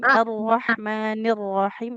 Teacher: Huruf H-nya dia di tengah tenggorokan kayak ini kayak ee kalau bisik-bisik.